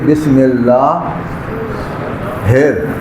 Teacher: یہ جو ہا ہے یہ ادا ہوتی ہے گلے کے وسط، سینٹر سے، لہذا اس کو پڑھیں گے بسم اللہ ہیر۔